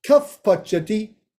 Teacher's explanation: When there's a pa following the visarga, it becomes a fa. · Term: Upadmaniya Visarga